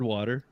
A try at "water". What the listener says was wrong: You say it with. It sounds like you say it with a D, not a T. Yeah, water. Water. I say I don't know. I say water. Like,